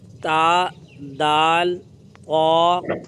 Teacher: سبق نمبر 4، حروف نطعیہ تا، دال، طا۔ زبان کی نوک اور اوپر کے دانتوں کے جڑ سے یہ 3 حروف ادا ہوتے ہیں۔